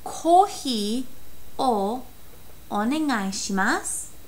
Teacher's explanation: a lot of the times that U at the end is kind of dropped and not really said